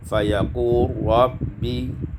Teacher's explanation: Kemudian pada ayat yang ke-16, fayaqulu rabbi, idgham lam fi ra, diidghamkan lam pada ra